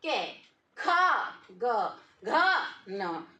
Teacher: अब आप यहाँ देखोगे के, ख, ग, घ, न, तो आप देखोगे कि यहाँ पर जो वायु बाहर निकल रही है, क में कम निकल रही है, ग में कम निकल रही है, न में कम निकल रही है, लेकिन ख, घ यहाँ वायु ज्यादा निकल रही है